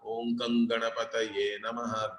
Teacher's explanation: The anuswara is followed by gakara, correct? So it will be om gang ganapataye namaha. Gang, not gum. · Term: ngakara